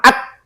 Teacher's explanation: tidak ada aliran suara. Tapi tidak boleh mantul karena bukan huruf qalqalah. Kenapa? Karena dia punya sifat hamas. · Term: syiddah